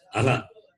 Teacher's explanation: The vowel sound goes and ends with the Visarga, also ends with the same vowel sound.